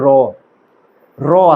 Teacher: তো এই র উচ্চারণ করার সময় আমাদের র কম্পন সৃষ্টি হচ্ছে। কাঁপতেছে। তাই এটাকে কম্পনজাত বলা হচ্ছে।